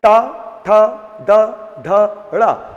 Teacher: देखिए आपका ये तालु है और ये जीभ है। आप ट बोलोगे तो जीभ पहले ऊपर खड़ी होगी। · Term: मूर्धन्य